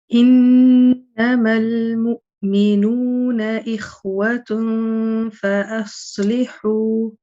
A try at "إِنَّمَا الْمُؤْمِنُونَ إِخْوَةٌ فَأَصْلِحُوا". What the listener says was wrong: Okay, so the ghunna still needs working on in إنما المؤمنون, which I think you already know that one.